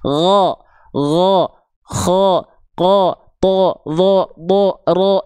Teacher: ketika dia terdengar vokalnya bukan A clear tapi seperti vokal O, maka dia adalah huruf yang dibaca dengan keadaan tebal